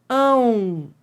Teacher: Ó, esse O é semivogal? É porque tem som de U.